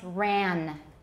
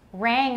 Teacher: they often substitute an alveolar nasal where there should be a velar nasal